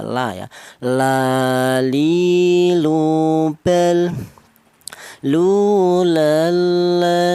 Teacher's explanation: untuk huruf lam keluarnya huruf berasal dari ujung lidah menyentuh langit-langit mulut